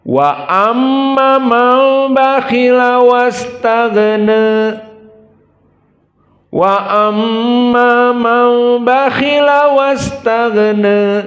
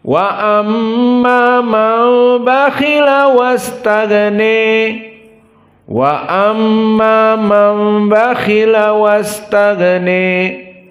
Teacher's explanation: Dan madhab yang kedua dibaca dengan al-imalah al-kubra di akhirnya